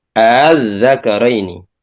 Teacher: dibaca dengan hamzah dan antara hamzah dan alif, yaitu tasil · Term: bacaan tasil